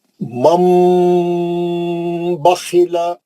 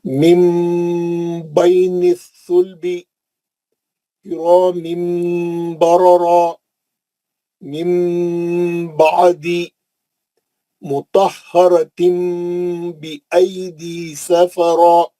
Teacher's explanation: نون ساکن کے بعد بھی با آیا تو میم لکھا ہوا ہے, تنوین کے بعد بھی با آیا تو میم لکھا ہوا ہے, اور میں میم کا غنہ کر کے پڑھ رہا ہوں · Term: اخلاب